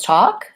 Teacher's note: it rhymes with walk and we don't say the L sound